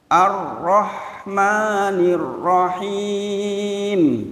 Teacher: Getaran ro maksimal berapa? Aturannya maksimal 2 yang betul.